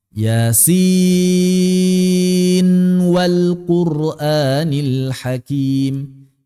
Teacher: tidak dibaca idgham. Padahal nun bertemu dengan waw. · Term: idhar